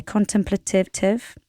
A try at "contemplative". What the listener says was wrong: are you putting an extra syllable in there